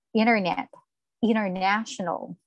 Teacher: When letter T comes after the letter N, the letter T is silenced.